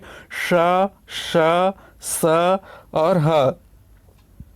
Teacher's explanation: ठीक है, स्पर्श नहीं करती है, स्पर्श करने के लिए संघर्ष करती है, और मुख से वायु भी है वो थोड़ा संघर्ष करते हुए बाहर निकलती है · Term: संघर्षी व्यंजन